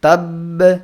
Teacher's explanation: সাথে আমরা আবার একটা বা সাকিনের মত এভাবেও পড়বো না বরং প্রথম বাটাকে ধরে রেখে দ্বিতীয় বা কলকলা করে একটু সময় নিয়ে পড়বো